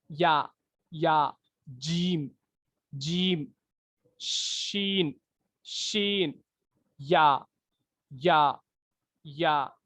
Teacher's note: जबान का जो है बीच का हिस्सा ऊपर की जो है तालू को लग रहा, ऊपर की तार को लग रहा हूँ, वो हिस्से को। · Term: हुर्फे शजरिया